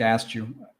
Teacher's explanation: there's hardly any T sound. The T sound mostly drops out. So it just sounds like asked you.